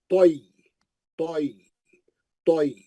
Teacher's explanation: या साकिन से पहले जबर है, वो लीन हो गया